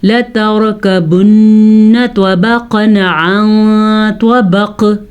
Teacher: لتركبن طبقا عن طبق, کلکلا. نون کا غنہ بھی ادا کرنا ہے کیونکہ نون پہ شد آ گئی ہے